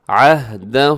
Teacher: آگے دیکھیے گا عہدہ، اب یہاں پر کیا ہے کہ عہدہ، ہا کو ہلائیے گا مت، اس کو ڈبل نہیں کرنا، اس کی آواز کو ایک ہی ساؤنڈ ہوگا، عہدہ، اس کے اوپر جو مد ہے اسے مد منفصل کہا جاتا ہے۔ 4 سیکنڈ تک لمبا کیجئے گا۔